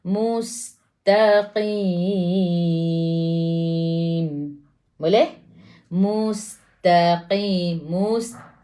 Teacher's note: Maintain ta dulu. Nipis, qaf tu tebal.